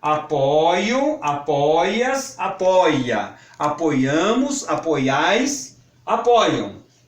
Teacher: O verbo apoiar tinha primitivamente fechado o ditongo. Hoje é mais corrente proferi-lo aberto.